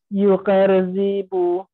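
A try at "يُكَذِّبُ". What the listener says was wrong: হ্যাঁ, আরেকটু খেয়াল করে, ইউকার হ্যাঁ ইউকার র থেকে আসলো এখানে তো জাল ইউকার জিবু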